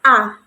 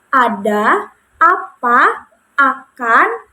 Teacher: vokal A ini posisi lidah itu berada di rendah bawah, gitu, rendah bawah dengan menggunakan lidah bagian depan